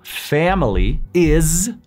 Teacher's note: no se dice is con S, se dice is con Z, aunque se escriba con una S